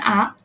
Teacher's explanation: তো এটা হচ্ছে কি বিবৃত ধ্বনি হচ্ছে আ, এবং এটা হচ্ছে নিম্নে আছে।